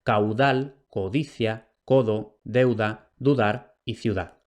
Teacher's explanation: la B implosiva se va a resolver vocalizando en U, es decir, transformándose en una U y formando diptongo con la vocal anterior en la mayoría de los contextos, entonces caudal, deuda, ciudad, o desapareciendo porque es absorbida por la vocal anterior si esta vocal anterior es velar, es decir, O o U.